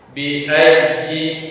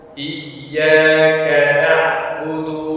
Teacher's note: harus dinabar atau ditekan sehingga ya bunyi ya tersebut sedikit naik karena penekanan pada huruf ya tersebut.